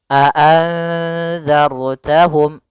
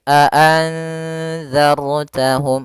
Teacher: Maka kita namakan dengan ra tafkhim. Ra yang dibaca dengan tebal, maka bukan a'anzartahum tapi tebal, a'anzartahum dan harus ditebalkan, a'anzartahum.